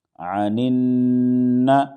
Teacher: نون پر تشدید ہے اس لیے اس میں غنہ ہوگا